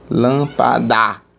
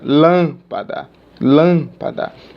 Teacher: proparoxítona ou seja ante penúltima sílaba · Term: sílaba tônica